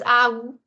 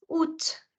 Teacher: Instead of pronouncing it as aou, it's août. A silent, T pronounced